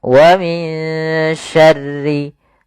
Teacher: ada bacaan ikhfa, yaitu suara nunnya disamarkan kembali kepada huruf shin